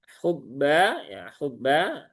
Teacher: Alif setelah fathah ini tipis semua ya